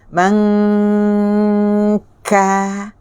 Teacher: Bila sebut aja ka, hilang dah dengung. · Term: Dengung ikhfa